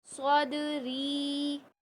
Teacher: یہ حروف مدہ پہ ہم وقف کر رہے ہیں تو ہم یہاں پر ایک الف کی مقدار کھینچیں گے